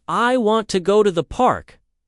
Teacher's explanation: in I want to go to the park, the stress falls on want, go and park. The other words are reduced.